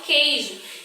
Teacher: Quando eu falo a palavra queijo, eu não pronuncio a vogal U.